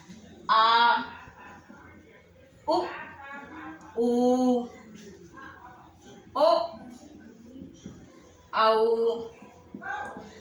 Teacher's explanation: पश्च भाग जिसमें जीवा का पीछे का भाग सक्रिय रहता है